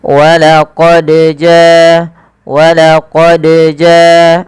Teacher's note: ada getaran dan pantulan maka ketika membacanya huruf Dal ini wajib mantul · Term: Qalqalah